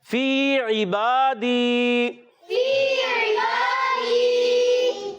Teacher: फी इबादी, فی یا مدہ ایک الف کھینچ کر ادا کریں گے. عین کی ادائیگی حلق کے درمیان والے حصے سے کلیئر عین کو ادا کرنا ہے, حمزہ سے بدلنا نہیں چاہیے